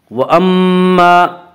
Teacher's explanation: مشدد غنہ ہوگا، غنہ کی مقدار 1 الف ہے